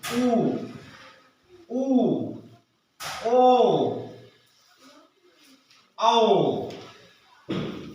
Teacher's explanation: देखेंगे ओष्ठ आकृति के आधार पर 2 रूपों में बांटा, वृत्ताकार स्वर और अवृत्ताकार स्वर। जिनके बोलने में ओठों की आकृति गोल होती है, वृत्त के आकार की हो जाती है, उन्हें वृत्ताकार स्वर कहते हैं। अब वृत्ताकार स्वरों में ऊ, देखो ओठ निकलता है, ऊ, बड़ा ऊ, ओ, औ, ओठों पर जोर पड़ता है।